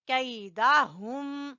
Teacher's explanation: ہا آخری حصے سے، گلے کے آخری حصے سے ہا ادا ہوگی